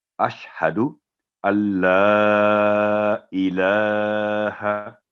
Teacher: لام نون ساکن کے بعد اگر لام پر تشدید ہے تو نون بالکل سائلنٹ ہوگا